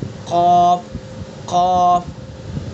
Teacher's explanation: قاف کا مخرج زبان کی جڑ اور اس کے مقابل اوپر کا تالو